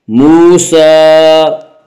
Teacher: موسیٰ، سین کے اوپر کھڑا زبر ہے، کھڑا زبر کو ایک الف کے برابر کھینچ کر پڑھیں گے